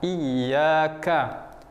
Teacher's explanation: Ka. Jadi ka-nya ada bunyi hamasnya. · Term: huruf kaf